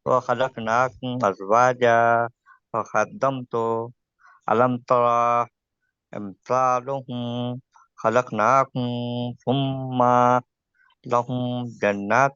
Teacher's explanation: آپ نے میم کو نہیں کھینچنا ہے. اظہار شفوی میں میم ساکن کو جلدی پڑھنا ہے.